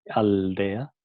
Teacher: a la hora de pronunciar el sonido L, los dientes tocan, la lengua toca en los dientes, ¿no? Entonces pasa de ser un sonido alveolar a ser un sonido dental. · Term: L dental